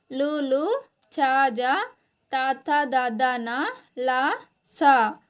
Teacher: దంతాల సహాయంతో పలికే అక్షరాలను దంత్యాలు అంటాం